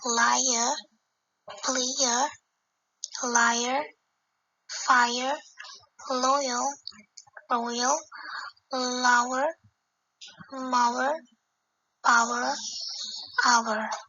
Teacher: The middle of the three vowels can hardly be heard. The resulting sound is difficult to distinguish from some of the diphthongs and long vowels. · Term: triphthong